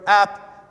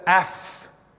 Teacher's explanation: these prepositions will go to not just the shortened form, but the shortened aspirated form. So apo, for instance, well, because it begins with a word because it's been followed by a word that begins with a vowel, it's going to lose its vowel, so it's going to get an ap.